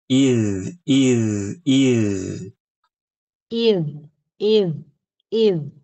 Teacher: Ibu perhatikan suaranya tuh tipis, pangkal lidahnya turun enggak naik. Jangan baca id.